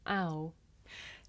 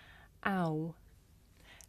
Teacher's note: this is a diphthong a double vowel sound the shape the mouth makes changes from the beginning of the sound to the end